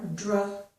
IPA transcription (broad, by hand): dɹ